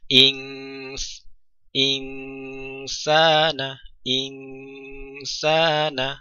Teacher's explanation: Nun sukun tidak dibaca dengan sempurna in, namun dibaca dengan samar karena posisi perangkat kita sudah harus kita siapkan untuk membaca huruf yang setelahnya, yaitu sin.